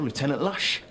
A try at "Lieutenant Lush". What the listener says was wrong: Lieutenant Lush. No, you said Lieutenant, as in Columbo.